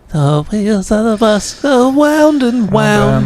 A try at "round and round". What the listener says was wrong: Wait, are you pronouncing the R? It's wound. Like you're winding something.